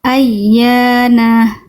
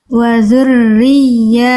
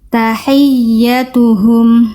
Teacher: Penekanan yang lebih kuat pada huruf ya bertasdid sehingga suara bacaan ya tasdidnya terdengar lebih nonjol, lebih tinggi. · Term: naber